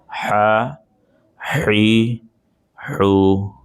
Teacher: ہا یہ والی آواز جو ہے وہ حلق سے پیدا ہوگی